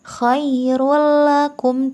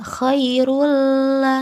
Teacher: dibaca dengan memasukkan ke dalam huruf lam dan roh tetapi tidak dengan dengung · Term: idgham bilagunnah